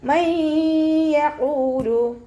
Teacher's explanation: മയ്യഖൂലു, നൂൻ സാക്കിനയ്ക്ക് ശേഷം ഇദാം ബിഉന്നയുടെ അക്ഷരമായിട്ടുള്ള യാ വന്നിട്ടുണ്ട്. നൂൻ സാക്കിനയെ യായിലേക്ക് ലയിപ്പിച്ച് ഉന്നയോട് കൂടി ഓതാൻ ശ്രദ്ധിക്കുക. നൂനിൻ്റെ സൗണ്ടിന് അവിടെ കേൾക്കൂല, യായിലേക്ക് ലയിപ്പിച്ചു കൊടുക്കുക കേട്ടോ.